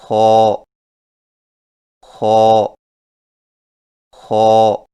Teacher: خو کی ادائیگی میں زبان کی جڑ کو تالو کی طرف بلند کرتے ہوئے موٹی آواز میں پڑھیں، یعنی خو خو خو۔